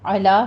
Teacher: 2 count کرنا ہے، آگے میں علا میں علو نہیں کہنا، علا عین وسط حلق سے ہے، لام باریک رہے گی